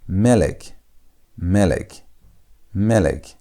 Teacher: When the word is having sego and sego, you do not put emphasis on the last syllable, on the last part of the word. You put the emphasis on the first part at the beginning of the word. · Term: segolet